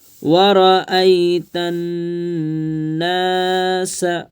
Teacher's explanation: را زبر ورا، حمزہ یا زبر ای، ورأی، تانون زبر تن، نون پر تشدید ہے اس لیے گنہ کریں گے، ناک میں آواز کو چھپائیں گے۔